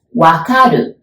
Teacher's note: we don't have R sound in Japanese, so we pronounce it like L, right? So like Lululemon's lu.